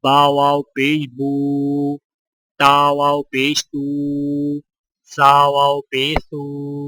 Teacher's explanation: واو مدہ میں ہونٹوں کو گول نہ تمام ملا کر تھوڑا سا کھینچ کر پڑھیں